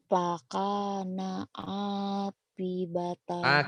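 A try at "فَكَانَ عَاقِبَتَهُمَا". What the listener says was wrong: Aki. Giliran kop ke Pak melulu. Bukan api, aki. Kop.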